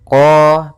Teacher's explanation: Istia maka lafal qnya lidah pangkal lidah kata terangkat qo kemudian tidak dimonyongkan bibirnya tapi dibuka saja untuk menyempurnakan daripada fathah huruf qnya kemudian huruf q kita panjangkan dua harakat di sini · makhraj daripada huruf qaf yaitu dari pangkal lidah kita, pangkal lidah, sehingga huruf qafnya harus dibaca dari pangkalnya supaya lebih jelas pangkal lidah kita.